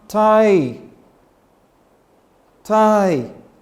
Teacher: When you make the sound tie, tie, it goes high. And by the time you make the sound g, you come low. So you have one stressed syllable followed by an unstressed syllable.